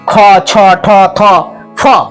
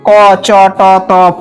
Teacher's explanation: তাহলে এই যে খ ছ ঠ থ ফ এগুলি হচ্ছে মহাপ্রাণ ধ্বনি আর প্রথম যে ক চ ট ট প এগুলি হলো কি অল্পপ্রাণ